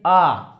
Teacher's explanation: मुख आपका पूरा खुल जा रहा है इसे हम विवृत स्वर कहते हैं क्या कहते हैं विवृत स्वर इसमें आपका मुख पूरा खुल जाए